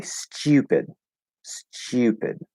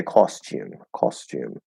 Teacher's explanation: they say stupid stupid it turns into a ch because that they're putting a y sound after and it's blending into chi